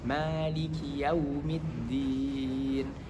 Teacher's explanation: harus diperhatikan huruf ma di sini panjangnya 2 harokat